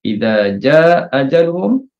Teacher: gugurkan satu hamzah dan kita panjangkan ja itu dua rakat boleh, empat rakat boleh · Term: wajah iskot